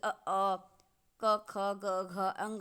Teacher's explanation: क्योंकि जब हम इन वर्णों का उच्चारण करते हैं तो जो प्राणवायु हमारे निकलती है, प्राणवायु गले से बाहर, वह कंठ को स्पर्श करते हुए निकलती है, इसलिए इनका उच्चारण स्थान कंठ माना जाता है। आप बोलकर भी महसूस करिए क ख ग घ अंग, ऐसा लगेगा गले पर कुछ प्रेशर पड़ रहा है। तो इस कारण ही इसका उच्चारण स्थान जो विभाजित किया गया है वह कंठ किया गया।